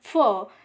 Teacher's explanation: we can examine that our upper teeth and lower lip touch to each other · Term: labiodental